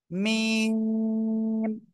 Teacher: মিম অক্ষরটা দুই ঠোঁটের শুকনো জায়গা থেকে অর্থাৎ বাহির থেকে উচ্চারণ হবে